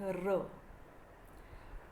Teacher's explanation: या व्यंजनांच्या उच्चारणावेळी जिभेचे टोक टाळूजवळ जातं. जिभेमुळे हवा अडवली जाते पण हवेच्या दाबामुळे जिभेचे टोक कंप पावते. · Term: कंपित व्यंजने